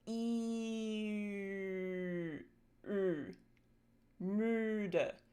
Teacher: E and uh are basically sister sounds because uh is just the rounded version of E. So, what we're going to do is we're going to start with E and we're going to round our lips. · So, say E and freeze everything and keep producing that vowel sound E but round your lips without moving anything else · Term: U umlaut